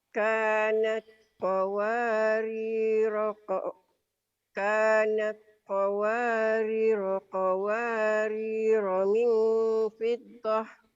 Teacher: Roh yang pertama panjang, roh yang ada sukunnya pendek.